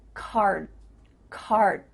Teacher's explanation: your mouth is making the shape of that D sound but it's not making the vibrations happening you're not actually making a D sound but your mouth is